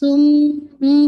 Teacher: ٹھیک ہے, اس کو اکمل غنہ کہا جاتا ہے. سم پورا نیزل میں آپ کی ساؤنڈ رن کرنی چاہیے آپ کی نیزل کیوٹی میں, اور ہولڈ فار 2 کاؤنٹ